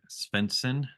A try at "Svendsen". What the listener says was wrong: Just pretend it's a W. Swenson.